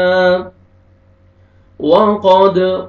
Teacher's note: قاف کو موٹا کر کے پڑھیں گے، دال پہ قلقلہ ڈبل ساؤنڈ آئے گا